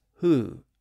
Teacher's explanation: one side and the rounded vowel sound on the other side the W sound in the middle disappeared and that left the H sound at the front and gave us the modern pronunciation as who even though the